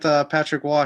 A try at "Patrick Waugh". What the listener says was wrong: Got to pronounce the name right. It's not Roy. It's Wah.